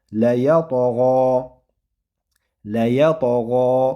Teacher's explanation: Hop, keyin la fatha bilan va undan keyin ya harfi ham fatha va bu yerda mana to harfi sukunlik. To harfi ham sukunlik bo'lganda qalqala qilib o'qiladi. Qalqala sifati bor buni ham.